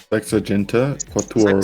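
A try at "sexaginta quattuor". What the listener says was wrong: Sexaginta? Ginta, not Genta.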